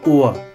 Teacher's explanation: 長母音の後のRはvokalisch。母音的に発音されますよと